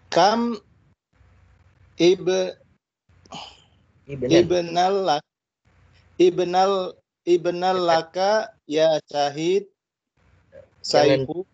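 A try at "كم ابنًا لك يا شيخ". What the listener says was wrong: Nah, tidak perlu diidghamkan Pak, ya, tidak perlu diidghamkan, jadi ibnan tetap dibaca tanwinnya. Jangan diidghamkan dengan lam jadi ibnal, ya, jangan ibnan laka.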